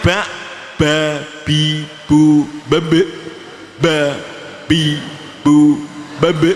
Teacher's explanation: jangan banyak nafas yang keluar, jangan ba bi bu, tapi ba agak ditekan. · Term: qalqalah